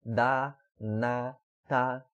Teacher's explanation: dá e na e tá são todas realizadas no mesmo local, logo acima dos dentes, um pouquinho acima dos dentes, né? Dá, na, tá, todas no mesmo lugar.